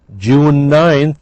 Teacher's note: the n is elided or blended